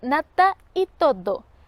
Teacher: por razones enfáticas articulamos nata y todo con oclusivas, y no con el alófono fricativo usual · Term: fortalecimiento